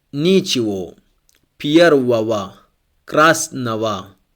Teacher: Here, go is pronounced like wo or wa. If the O is stressed, we pronounce it wo, and if the letter O is unstressed, we pronounce wa.